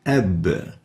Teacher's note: for the ab, we'll find that the voice or the sound has ended at the lips.